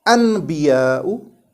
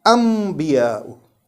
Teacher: It's a noon sakin, but we don't read it as anbiya'u. Instead, we read it as anbiya'u, changing this noon sakin into the sound of meme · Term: iqlaab